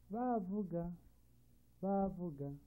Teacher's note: A double high tone which is used to give emphasis on words.